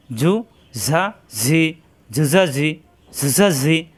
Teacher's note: জিহ্বা নিচের দাঁতে চাপ দিয়ে উচ্চারণ করতে হয়, নিচের দাঁতের আগা অথবা মাঝখানে চাপ দিয়ে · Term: সফির হরফ